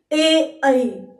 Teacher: कंठ तालव्य स्वर कहलाएंगे, क्योंकि इनका उच्चारण स्थान कंठ भी है और तालु है, दोनों का संयोग हो रहा है।